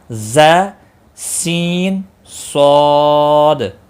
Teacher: ز ذال، یہ دیکھو ذال نرمی والا ہے، ز تھوڑا سختی سے ادا ہوتا ہے، سٹی کی آواز آنی چاہیے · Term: حروف صفیریہ